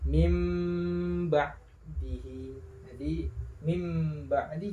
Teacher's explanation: suara non sukun diganti dengan suara mim sukun mim mati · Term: iqlab